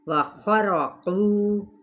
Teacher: خا پر را بھی پر پڑھا جائے گا اپنے فتحہ کی وجہ سے